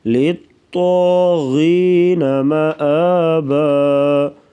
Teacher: طا اور غین کو پر پڑھیں گے موٹا